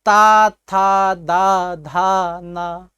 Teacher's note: जब हम तवर का उच्चारण करते हैं हमारी जिह्वा दांत से सटती है, इसी कारण इन्हें क्या कहा गया, दंत कहा गया।